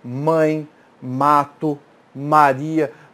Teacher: você tem que começar com os lábios fechados porque essa é uma consoante oclusiva bilabial oclusiva fecha a passagem do ar bilabial com os lábios pense